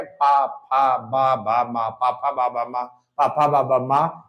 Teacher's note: अगला होस्ट व्यंजन यानी होठ का यूज़ होगा। तो जो दोनों होठों के मिलने से बोले जाते हैं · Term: होठ व्यंजन